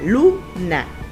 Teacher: la sílaba tónica se encuentra en la penúltima sílaba